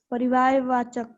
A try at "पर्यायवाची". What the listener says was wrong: No no बेटा, परिवार नहीं है, पर्यायवाची। पर्याय, नहीं बेटा, पर्याय। पर्याय। पर पर बोलो। पर याय बोलो, याय। जो शब्द आपको पढ़ने ना आए उसको तोड़ के पढ़िए। जब तोड़ के पढ़ेंगे ना ऑटोमेटिक आपको पढ़ने आ जाएगा। पर याय।